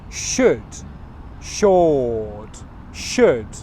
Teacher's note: The L sound you don't pronounce.